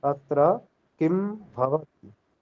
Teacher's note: जो मकार के बाद अकार लगा रहे हैं ना आप, ये इसमें थोड़ा दोष है। जैसे अत्र किम भवति, ऐसा नहीं होगा। · म जो है वो हलंत है, वो अनुस्वार बन जाता है। या तो इसका अनुस्वार की तरह उच्चारण करना चाहिए।